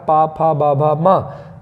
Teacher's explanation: ये सब कहाँ से बोले जाते हैं? ओष्ठ से बोले जाते हैं।